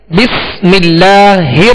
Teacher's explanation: लाम से पहले जेर लिहाजा बारीक पढ़ेंगे